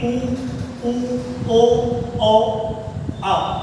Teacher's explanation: तो जब आप इनका उच्चारण करेंगे उ ओ ओ आ, तो इसमें जो है हमारे जो लिप्सिंग है वो सर्किल शेप के बन रहे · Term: व्रतमुखी